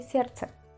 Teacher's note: La cuestión es que aquí la D pasa a ser una T. Entonces, para que suene más fácil, se dice сердце.